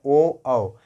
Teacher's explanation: ये दोस्तों हमारा होता है क्या है, ओ औ। ये निकलते कंठ से हैं, लेकिन फेस टच जो बनता है वो ओष्ठ पे बनता है